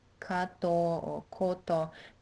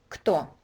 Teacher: It needs to be very fast from k to t. Кто. And what might help is focusing on the vowel.